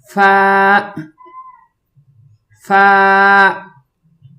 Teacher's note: اس کے لیے نچلے ہونٹوں کو اوپر والے دانتوں سے ٹچ کر کے پھر اس کی آواز نکالیں گے